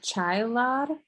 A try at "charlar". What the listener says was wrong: Char, like an R. Charlar.